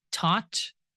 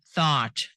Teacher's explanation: th is made by placing your tongue between your teeth. Again, this is these are voiceless sounds.